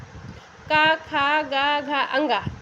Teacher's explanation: कंठ का वर्ग जिसे हम कंठ से बोलते हैं